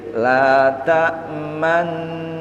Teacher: Di tengah-tengah dengung bibir harus mencucu sebagai isyarat dhammah. Jadi dhammahnya hanya isyarat. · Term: ismam